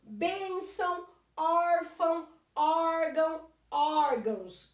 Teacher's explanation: terminou em ão, não é mais forte a última, é a penúltima, eu tenho acento.